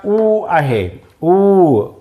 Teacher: ऊ बघा ओठांची चुंबळ करावी लागते, ऊ ओठांची चुंबळ करावी लागते. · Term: ओष्ठ्य वर्ण